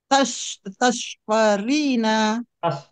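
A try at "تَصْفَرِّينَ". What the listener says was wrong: Tasfarrina. Rohnya bertasdid Ibu.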